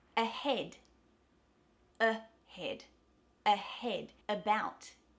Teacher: So whereas an a is really open, an I is really high, the schwa is completely relaxed · So this is when the schwa sound is replacing that short a sound.